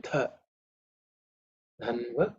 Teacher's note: This dha is the 4th letter in the Thavarga. So it has to be aspirated.